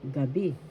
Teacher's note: First syllable ga, second syllable bi. The accent is in the second syllable, gabi, night.